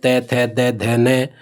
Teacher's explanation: जब उच्चारण करते हैं तो अपनी जीभ दांतों जीभ का अग्र भाग दांतों से लगता है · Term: दंत्य, दंत्य ध्वनि